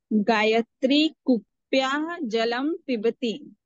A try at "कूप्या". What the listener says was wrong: वहां विसर्ग नहीं है। कूपी, कूप्या, कूप्याहा करेंगे तो पंचमी षष्ठी हो जाएगी।